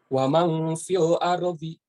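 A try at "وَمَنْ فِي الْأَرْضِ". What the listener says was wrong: Anu lah, wamang kesing panjang.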